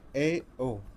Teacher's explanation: अर्धविव्रत स्वर, इसमें क्या होता है? मुख आधा खुला रहता है